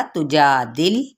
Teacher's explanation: ता की पेच को लंबा नहीं करेंगे, जबकि जा पे अलिफ मद्दा का कायदा हो रहा है।